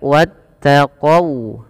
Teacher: jangan dibaca wattaqau dengan o, tapi dia dengan u ya, karena dia sifat waw. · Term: huruf waw